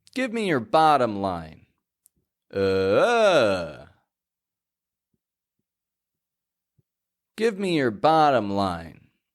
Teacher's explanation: If you hear bottom stressed, then you're correct.